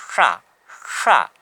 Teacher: ये जीभ को हम ऊपर की तरफ मोड़ के बोलते हैं